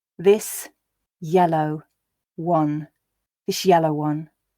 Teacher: So s definitely changes to sh before a y sound.